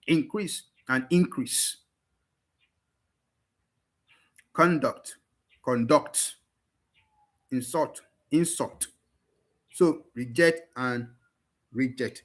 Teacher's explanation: So each of them, just know when you have words like this that can appear as both noun and verb, the noun version is stressed on the first syllable at the beginning, while the verb version is stressed on the second syllable · Noun version, stress on the first syllable. Verb version, stress on the second syllable. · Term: stress shift